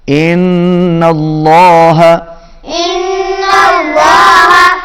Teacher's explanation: نون کے اوپر تشدید، غنہ ہوگا نون پر